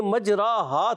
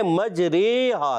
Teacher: امالہ کہتے ہیں مائل کرنا الف کو یا کی طرف، الف کو یا کی طرف، جیسے ہم پڑھتے قطرے، ہمارے، تمہارے، یہ جو یا بڑی یہ ہوتی ہے نا، یا مجہول بھی کہتے ہیں اس کو، تو اس کو اس طرح سے پڑھنا یہ امالہ کہلاتا ہے۔